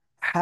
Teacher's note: আপনারা এই অক্ষরটা যদি হা এরকম বলেন তাহলে মারাত্মক ভুল হবে গলা চেপে বলতে হবে এক আলিফটা নিয়ে